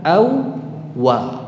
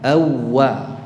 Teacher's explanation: wau yang pertama tidak perlu diucapkan jadi langsung ke wau yang kedua dalam pelafalannya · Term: idgham